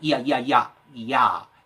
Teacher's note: 이야, 그 느리면 이야 독립적이지만 이걸 빨리 붙여보면 이야, 이야, 이야, 이야, 야라는 발음 속에 이가 선행해서 났다가 사라져 버리죠. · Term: 반모음